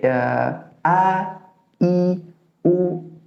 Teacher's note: huruf hamzah atau a ini keluar dari pangkal tenggorokan atau bawah tenggorokan